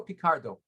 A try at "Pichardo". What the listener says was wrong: Pichardo. And the H is not silent.